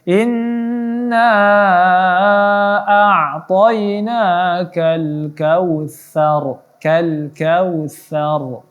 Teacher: Ya, kal kautsa, angin sa-nya dilembutkan. Sa dijinjit lidahnya, huruf sa antara gigi atas dan gigi bawah. Lidahnya diletakkan di antara gigi atas dan gigi bawah.